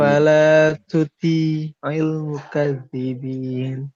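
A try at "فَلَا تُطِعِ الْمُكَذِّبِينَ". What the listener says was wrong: Nah, itu agak lebih cenderung ke tak, tapi hamsnya nggak ada. Tu, ti, hampir. Tertinggal pangkal lidahnya dinaikkan. Tuti'il mukadzibin.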